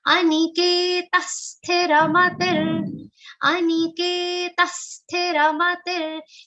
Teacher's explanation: In this charan, only K is a long sound. Rest everything is a short sound. So ensure that you do not elongate anything.